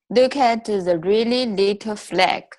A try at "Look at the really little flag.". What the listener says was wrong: Beautiful. See that really word? It's one of the hardest words to pronounce